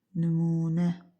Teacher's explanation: Nümunə sözündə nümunə u uzun tələffüz olunur.